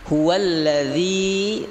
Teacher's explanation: zi panjang, huwa pendek